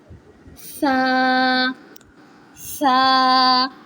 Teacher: Sa comes when the tip of the tongue touches the edge of the upper two front teeth.